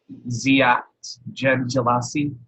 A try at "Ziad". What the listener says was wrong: Ziad, with, in your language, a D at the end.